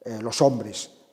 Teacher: mantiene mejor o cuando está ante vocal por ejemplo los hombres esa s de los hombres puede aspirarse también puede decir los hombres pero pero ya es más raros